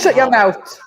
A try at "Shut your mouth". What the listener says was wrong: You forgot the H at the end. You forgot the H because you left the call before.